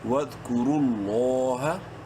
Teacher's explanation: ود، الف silent ہے، کاف پیش کو، را لام پیش رول، را کو منہ بھر کے پڑھیں گے اور بیچ میں واو اور دونوں الف سائلنٹ ہیں، اور لفظ اللہ سے پہلے چونکہ را کے اوپر پیش ہے، لام کو بولڈ بھی کرنا ہے، ایک الف کے برابر لمبا بھی کرنا ہے